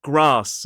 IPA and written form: ɡrɑːs (grass)